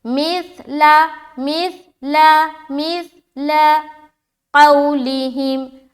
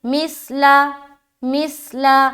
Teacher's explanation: سا میں بھی سیٹی آواز نہیں آئے گی، نرمی کے ساتھ ادا کریں گے